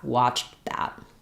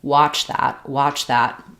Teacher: Versus watch that, just a CH and a TH sound right next to each other, much clearer and more distinct. · You'll just hear that there's a little bit of a muted breaking sound between watched and that. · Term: past tense linking